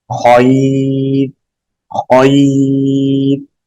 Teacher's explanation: یا ساکن، را ساکن سے پہلے یا ساکن ہو تو ہمیشہ باریک پڑھیں گے